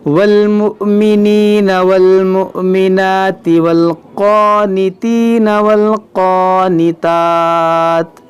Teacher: या मद्दा के बाद नून पर आरज़ी सुकून आ रहा है रुकने की वजह से, तो यहाँ पर मद्दे आरिज़ का कायदा लगेगा।